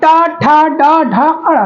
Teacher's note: तो ये जब जीभ हमारी क्या हो रही, मुड़ रही है, ठीक है, मुड़ रही है, तो मूर्धन्य, मूर्धन्य, ठीक है, या मूर्धा भी बोलते हैं, मूर्धा, दोनों नाम मैं बता दे रहा हूँ, मूर्धा या मूर्धन्य, ठीक है, याद रखेंगे। तो मूर्धन्य जब हमारी जीभ मुड़ती है